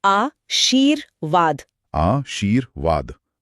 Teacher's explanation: र की आवाज व से ठीक पहले आ रही है। इसीलिए यह व के ऊपर लगेगा।